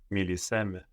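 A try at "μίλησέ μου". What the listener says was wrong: Very nice with the accent. But it's not so much me, no? Speak to me. Milisemu.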